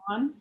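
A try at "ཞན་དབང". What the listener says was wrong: Yeah, say shen. Wang. NG at the end. Wang.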